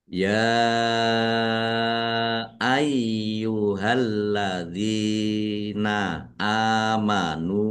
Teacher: Ya fathah berdiri maktobi'i. Tetapi karena bertemu dengan huruf alif di kata yang berbeda, maka menjadi mad jaiz munfasil. Dibaca panjang boleh 5, boleh 2 harokat.